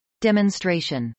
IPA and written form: dˌɛmənstrˈeɪʃən (demonstration)